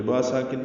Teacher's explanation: با ساکن پہ قلقلہ ہوگا